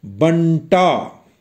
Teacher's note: इसमें ब और टा के बीच में णा अर्ध ध्वनि उपस्थित है